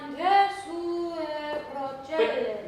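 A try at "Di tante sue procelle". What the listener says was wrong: But move even less. Even less movement. But even there, I still feel you want to move it, yeah? So say di a e ue. so now it's just like your throat just stays open.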